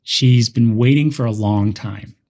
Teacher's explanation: we stress waiting and long